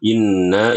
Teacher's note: juga nunnya harus di tahan dua harakat